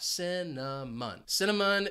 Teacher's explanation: Notice that C is going to have an S sound, and it's followed by the schwa,